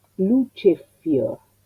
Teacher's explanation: Monosílabo fuerte que asimila la F que sigue adelante. Entonces le pongo otra F, le quito el espacio y así es como esta construcción, luce fior, queda convertida en esto.